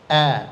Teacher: Hamzah itu huruf tipis. Senyumkan saja. A, jangan o. Enggak boleh o, ya, tapi a, ya.